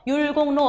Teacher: 한자어 뒤에 리을이 니은으로 발음 나서 비음화가 일어나죠